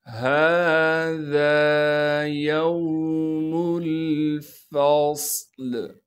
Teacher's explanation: ہا پر کڑا زبر ہونے کی وجہ سے ہا کو ایک الف کے مقدار کھینچیں گے